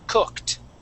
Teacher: So when we, for example, when we have the word cooked, okay, we're going from that K straight to that T sound